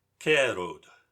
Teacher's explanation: the devoiced version of Old High German Ger, spear